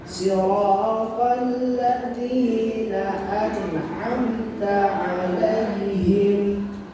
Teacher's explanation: Tapi an'amta 'alaihim enggak boleh dibaca dengung, enggak boleh ditahan. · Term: idhar safawi